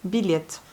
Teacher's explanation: Et là, vous entendez le yé un peu atténué. Vous voyez, yé.